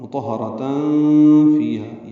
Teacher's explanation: را پر پڑھیں گے اور اس کو تائے مربوطہ سے وقفاً ملا دیں گے، مطہرہ، اور اس پہ ہمس ہوگا، ہا پہ یعنی سانس جاری رکھیں گے. ملانے کی صورت میں تنوین کے بعد فا آنے کی وجہ سے اخفا ہوگا. مطہرتاً فیہا، یعنی تاں پڑھیں گے، اخفا کریں گے.